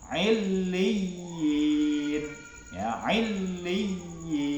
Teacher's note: Terus yang selanjutnya, yang terakhir adalah mad tamkin, ya, yaitu huruf ya kasrah bertasydid bertemu dengan ya sukun, panjangnya 2 harokat. Illiyin, ya, illiyin, ya kasrah bertasydid kemudian bertemu ya sukun.